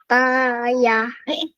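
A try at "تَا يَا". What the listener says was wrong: Yang ini pendek, sayang.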